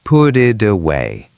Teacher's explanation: Flap t because it's between vowels. It plus away.